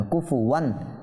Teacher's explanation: তানবিনের পর হামজা আসার কারণে এই তানবিনের মধ্যে ইজহার হয়েছে